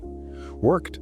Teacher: No vibration. Because your throat is quiet, the ED ending also wants to be quiet and hard. It becomes a T sound.